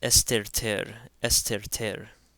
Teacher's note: here's an example of the theta taking on a T sound as opposed to a th sound because it comes after a SEMA so this word is Esther